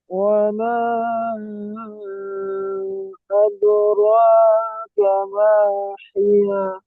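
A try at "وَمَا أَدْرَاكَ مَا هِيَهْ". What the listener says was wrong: ওয়ামা, মিমটি বেশি করে টান দিয়ে বলেন, তিন আলিফ টান। ওয়ামা আদরাকা মা হিয়া।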